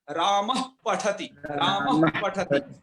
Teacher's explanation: लेकिन यदि ये विसर्ग ये पहले लगे हैं पाफा से पहले तो ये अर्ध विसर्ग में बदल जाएंगे, तब इनका उच्चारण उपध्मानीय करना है। और उपध्मानीय का उच्चारण स्थान किससे होता है, ओष्ठ से